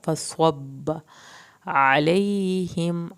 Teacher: आइन को हल्क से पढ़ना है